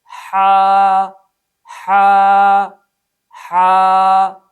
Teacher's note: صفت استفال اور انفتاح کی وجہ سے اس حرف کو خوب باریک ادا کریں گے۔